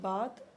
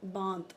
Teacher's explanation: कन्नौजी में अनुनासिकीकरण की प्रवृत्ति अत्यधिक मात्रा में मिलती है